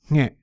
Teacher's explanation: It has an aspirated nasal sound at the beginning.